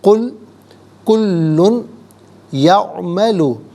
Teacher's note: कुल कुल्लुन यामलु, कुल्लुन में लाम पर 2 पेश की तनवीन है, इसे यामलु की या के साथ मिलाएंगे, या की आवाज़ को गुन्ने के साथ अदा करेंगे। यहाँ यरमलुन का कायदा अप्लाई होगा।